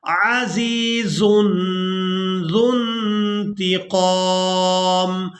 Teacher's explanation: یہ واو صرف رسم الخط ہے، اس کو ادا نہیں کریں گے۔ زال کو نون ساکن کے ساتھ ملا کر ادا کریں گے، زال نون پیش، ذن عزیز ذو انتقام، ان اللہ لا یخفی، ان اللہ لا یخفی علیہ شیء فی الارض، علیہ شیء، یہاں تنوین پر اخفا کریں گے، یعنی نون کی آواز کو ناک میں چھپا کر ادا کریں گے۔